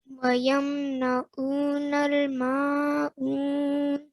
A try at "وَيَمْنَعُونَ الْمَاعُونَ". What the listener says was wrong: So all the prolongations were correct. Just the ayn again. The ayn, make sure it comes from your throat. This ayn and this ayn as well. So make sure it comes from your throat.